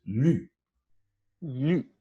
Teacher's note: This involves that one where we write a letter Y in IPA. It's front, high, and the lips are rounded.